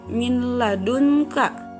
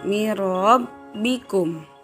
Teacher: idgham bilagunnah tidak didengungkan · nun mati bertemu dengan huruf lam. Min ladunka tidak didengungkan